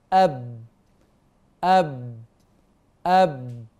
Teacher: يحدث تصادم بين الشفه العليا والشفه السفلى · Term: الباء